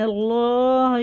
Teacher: یہ اللہ کا لام زبر سے پر پڑھیں گے